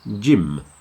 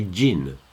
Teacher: Make sure you pronounce the M, gym, like an M, not an N, otherwise you say gin.